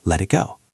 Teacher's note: Notice how the T in let sounds almost like a soft D because it is between 2 vowels.